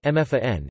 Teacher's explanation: with stress on the prefix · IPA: [ˈʔʊmfaːʀən]